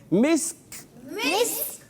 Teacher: کھ نہیں کرنا, صرف کاف کی ادائیگی, اور کاف بھی یہاں پر ساکن ہو جائے گا